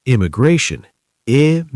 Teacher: Four syllables. Stress on the third.